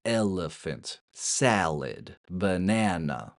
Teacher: We take a normal vowel like a or o and turn it into a relaxed vowel like uh or i. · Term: schwa